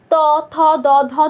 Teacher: দন্ত উচ্চারণ এগুলো উচ্চারণ করতে দাঁতের প্রয়োজন হচ্ছে